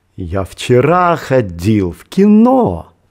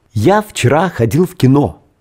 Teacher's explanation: языке не значимые слова стоящие в начале фразы звучат достаточно высоко в английском языке ударные слоги выделяются движением тона сверху вниз а в русском языке снизу вверх